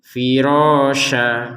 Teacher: kalau kita berhenti menjadi firosya jadi panjang dua harakat